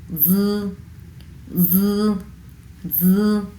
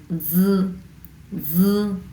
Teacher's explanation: আপনার জিভের যে সামনের অংশ আছে এটা ভাইব্রেট হবে